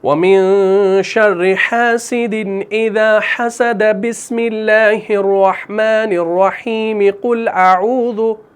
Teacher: یعنی پورے کو آپ نے یعنی وصل کل کیا, پورے کو آپ نے ایک سانس میں پڑھا, کہیں پر آپ نے وقف نہیں کیا